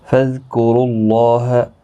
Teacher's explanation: را پر پڑھا جائے گا پیش کی وجہ سے، اور اللہ کا لام بھی اسی پیش کی وجہ سے پر پڑھا جائے گا۔ اس کے اوپر کھڑی زبر بھی ہے، ایک الف کی مقدار کے برابر کھینچ کر بھی پڑھیں گے۔